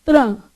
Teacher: sua linguinha vai no meio do dente vai vibrar e abrir